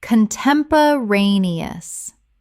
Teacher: Six syllables with the stress on the fourth.